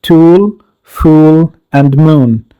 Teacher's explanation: this one is a back closed vowel in which the lips are rounded in shape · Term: u sound